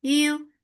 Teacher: Ya is light. For dhamma circle lips, the sound is short.